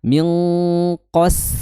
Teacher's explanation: Kemudian sin di situ qas langsung tipis ya. Setelah qof mengucapkan huruf yang tebal langsung jatuh tipis minqos. Nah langsung tipis sinnya tipis ya.